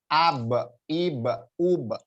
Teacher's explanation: jadi jangan sampai keluar angin karena dia nggak mempunyai sifat hames tapi jahar